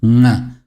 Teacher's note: So like the n is kind of here at the throat. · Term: nga sound